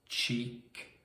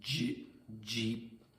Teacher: So the j is vibrated